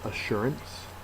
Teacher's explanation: The second syllable is accented